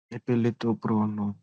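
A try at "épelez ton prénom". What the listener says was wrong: Pre no. Not pro no. Pre no. E is getting a because there is an accent aigu on the E. That's why pre no. If there was no accent, it would have been prano.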